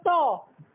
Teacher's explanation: ট যখন উচ্চারণ করছে জিভের ডগা কোথায় স্পর্শ করছে? আমাদের মুখবিবরের শক্ত তালুতে, যেটাকে আমরা মূর্ধা বলি, মূর্ধাতে স্পর্শ করছে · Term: মূর্ধন্য ধ্বনিতে